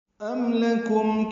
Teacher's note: ام اور لکم دونوں میں میم ساکن پہ اظہار شفوی ہے